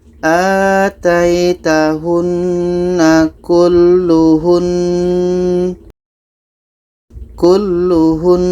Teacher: Kita dengungkan dua harkat baru matikan nunnya. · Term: nun tasydid